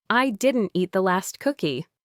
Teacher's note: you're emphasizing last, implying maybe you ate the first one, but definitely not the very last one.